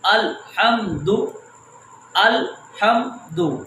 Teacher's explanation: یہاں پر لام کے اوپر بھی آواز نہیں چھوڑنی، میم کے اوپر بھی آواز نہیں چھوڑنی.